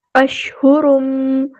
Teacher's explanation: تنوین کے بعد میم آیا ادغام مع الغنہ ہے